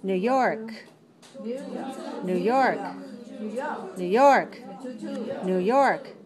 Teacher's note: Never pronounce the stress on the word new. Always pronounce it on the next word.